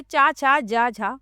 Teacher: तो हिंदी की तालव्य ध्वनियां हैं च वर्ग में।